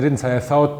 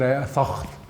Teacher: So they didn't say I thought, they said I thocht, with a ch sound